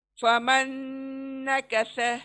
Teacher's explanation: फमन नकस, स देखें, स नहीं बोलेंगे, स बोले तो सीन हो जाएगा। स का मखरज ध्यान में रखें, जबान सामने के दांतों को लगेंगी जाकर, तब स अदा होगा